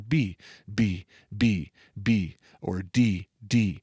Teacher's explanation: when i do that i feel my vocal cords vibrating meaning it's adding a frequency it's adding a pitch to that consonant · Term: voiced